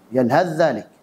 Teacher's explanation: jika huruf ta sukun ketemu dal maka dibaca idgham, yaitu yalhadzalik. Itu kalau kita wasal, yalhadzalik.